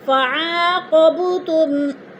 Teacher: فعاقبتم، فعا پہ الف مدہ، قوب پہ قلقلہ ہو رہا ہے، با ساکن اور حروف قلقلہ میں سے ہے تو با کو ہلا کر پڑھیں گے